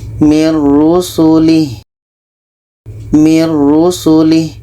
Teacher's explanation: Jadi bunyi nun kita masukkan ke ra. Kita baca mir rusulih, mir rusulih. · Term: idgham